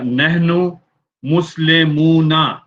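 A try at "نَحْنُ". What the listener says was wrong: नहनु नहीं गए, नाहनु गए। नाहनु। नाहनु मुस्लिमुन।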